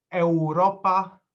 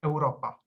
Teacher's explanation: U is not always pronounced as a vowel U, but in diphthongs AU and EU, it's pronounced as the English W. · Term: short W